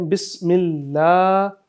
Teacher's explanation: لام کے اوپر کھڑی زبر ہے تو اس کو آپ نے لمبا کرنا ہے